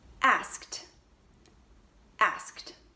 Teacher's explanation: You won't hear the E at all, and the D will sound like a T, asked. So it's not asked like it looks, but it's asked. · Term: T sound